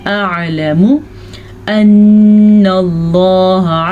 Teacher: لفظ اللہ سے پیچھے والے حرف پہ زبر ہے تو لفظ اللہ کو ہم پر پڑھیں گے